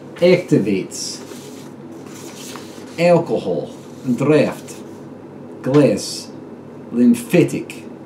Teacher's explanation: The final Z becomes S, kols, cubes, rations, serves, traditions. The short A grows nasal